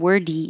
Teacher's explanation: your tongue goes to the D position and makes a quick du